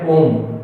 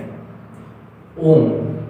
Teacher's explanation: जैसे हम लोगों ने, जैसे एक मंत्र का उच्चारण होता है ओम, ठीक है, ओम, तो इस प्रकार से जब ये शब्द लंबा खिंचाता है तो इसे ही कहा जाता है प्लुत स्वर